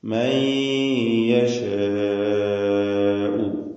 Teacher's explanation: മൻ എന്നതിലെ സാക്കിനത്തായ നൂനിനെ ഇദ്ഗാം ബിഗുന്ന ചെയ്ത് യായിലേക്ക് ഭാഗികമായി ലയിപ്പിച്ച് മണിക്കണം. ഇദ്ഗാം ബിഗുന്ന പൂർണ്ണമായ ഇദ്ഗാമല്ല, നാഖിസാണ്.